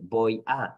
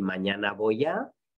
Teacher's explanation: Entonces, por ejemplo, la diferencia entre voy a y mañana voy a es la diferencia entre B oclusiva y B aproximante